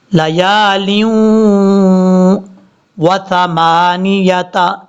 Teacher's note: سا بغیر سیٹی کے ساتھ پڑھا جائے گا. نون کے بعد یا کو کلیئر کرنا ہے. · اب یہاں پر لام کے بعد جو واو ہے، لام کے نیچے 2 زیر ہیں، اس کے بعد واو ہے. 2 زیر کے بعد جب بھی واو آ جائے وہاں پہ غنہ کیا جاتا ہے 2 سیکنڈ کے قریب. یہاں پہ غنہ کریں گے 2 زیر کے بعد کیونکہ واو آ رہا ہے.